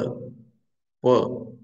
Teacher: प माने ओठों से स्पर्श करके बाहर निकली ध्वनि